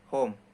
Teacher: When the glottis open and the air passes out of the mouth freely, H is produced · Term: glottal